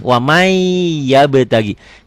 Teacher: Tulisan dan bacaannya beda. Tulisannya ada bunyi N-nya, bacaannya N-nya hilang, melebur tuh. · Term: idgham bigunnah